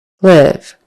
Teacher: the L in live, the first sound in live, is produced with your tongue right behind your top teeth